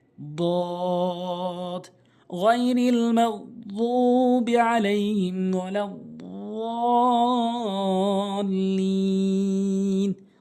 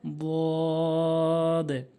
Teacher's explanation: জিহ্বার গোড়ার কিনারা উপরে মারির সঙ্গে লাগাবেন